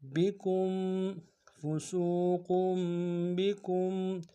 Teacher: میم ساکن میں غنہ کریں گے